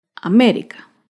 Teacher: América se acentúa en la antepenúltima sílaba. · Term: palabra esdrújula